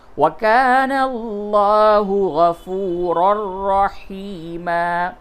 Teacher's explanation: ادغام تو ہوا لیکن ناک میں آواز نہیں گئی، گنہ نہیں ہوا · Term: ادغام بلا غنہ